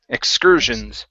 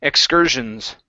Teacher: this is excursions with the stress in the middle.